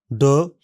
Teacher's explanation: स्वर यंत्र कंपन करता है। मुलायम तालु ऊपर उठकर नासिका मार्ग को बंद कर देता है। जीभ का सिरा पीछे की ओर मुड़कर कठोर तालुक को छूता है।